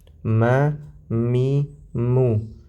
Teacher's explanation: setiap huruf mim dan huruf nun diucapkan, dia pasti akan melewati rongga hidung.